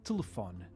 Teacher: No meu caso, a pronúncia é telefone, com as vogais bem audíveis, mas alguns portugueses reduzem o som dessas vogais ao ponto que elas quase somem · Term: reduzimos as vogais